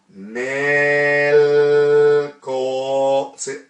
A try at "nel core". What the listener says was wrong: Co. See, your tongue's over there. So you're going to learn to get it forward. So tongue always moves after the consonant back to the teeth. See how your tongue's got a habit, it pulls away.